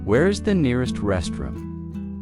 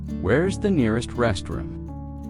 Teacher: In fast speech, where is sounds like where's.